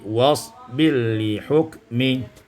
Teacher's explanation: Pada ayat yang 48, wasbir li hukmi, idgham ra fil lam, diidghamkan ra pada lam, maka menjadi wasbir li hukmi